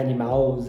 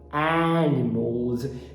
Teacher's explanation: Hoje eu já sei que o fonema inicial é um A. Eu já sei que esse L é subidinho, e que esse S é pronunciado Z.